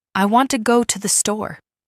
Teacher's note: In this sentence, want and store are stressed, and the other words are said quickly and softly.